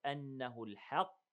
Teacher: the قاف is heavy all the way